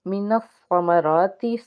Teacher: سا کو 2 بار ادا کریں گے کیونکہ اس کے اوپر تشدید کا سائن ہے · را کے اوپر کھڑا زبر ہے، ایک الف کے برابر کھینچ کے ادا کریں گے۔